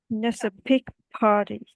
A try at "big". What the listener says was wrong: Big, not pig. Well, it's not a big party. Party. Big, big, not pig.